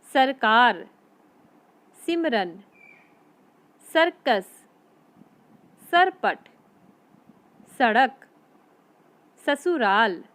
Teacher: जब हमने इन शब्दों को बोला है तब हमारी जीवा दांतों के अंदर के भाग को छूती हुई आई